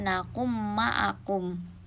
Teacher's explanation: cara membaca dari Idgham Bighunnah yaitu dengan cara mendengung satu Alif sampai satu setengah Alif